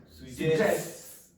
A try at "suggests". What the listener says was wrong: Now, did you hear an S at the end there? I didn't. I just heard suggests.